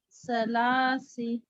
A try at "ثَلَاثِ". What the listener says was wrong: جی سا کا مخرج صحیح لیجیے ثلاثی جی بارک اللہ فیک تھوڑا زال اور سا کا مخرج صحیح نہیں آ رہا ہے سسٹر آپ وہ صحیح کیجیے ٹھیک ہے زبان کی نوک اور ثنایا الیہ کے کنارے یعنی اوپر کے دانتوں کے کنارے